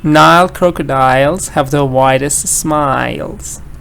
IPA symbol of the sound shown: aɪ